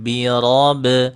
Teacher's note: Itu qalqalahnya itu diringankan pantulannya, jangan dihilangkan.